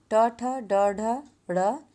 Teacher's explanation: मूर्धा का जिह्वा के अग्र सिरे से स्पर्श होकर ये ध्वनियाँ, ये वर्ण निकलते हैं, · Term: ट वर्ग